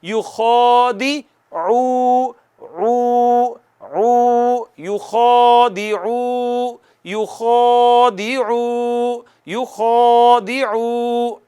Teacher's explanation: عین ہوتی ہے ادا وسط حلق سے، اس کے اوپر پیش ہے، پیش ہونٹ گول کر کے ادا ہوتی ہے، ہونٹ گول کر کے آواز یہاں سے نکالنی ہے وسط حلق سے